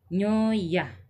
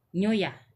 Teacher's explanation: Nah, di daerah saya ini nyoya itu agak lambat, intonasinya agak lambat, sedangkan di daerah lain itu nyoya agak cepat